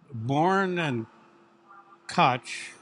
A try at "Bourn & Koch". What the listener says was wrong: Bourn and Co. Yep, the CH is silent.